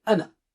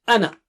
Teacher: Ana is very special. Don't recite it with alif mad. In general, when it is in between, unless you stop at it, but in general ana comes in between, so you just say ana.